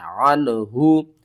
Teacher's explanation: عین کو آپ نے حلق کے درمیان والے حصے سے ادا کرنا ہے